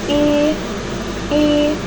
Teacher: termasuk ke dalam vokal depan dengan posisi lidah tinggi, bentuk bibir tak bulat, juga termasuk ke dalam vokal tutup. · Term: final I